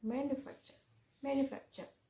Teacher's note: Four syllable word with the stress on the third syllable is manufacture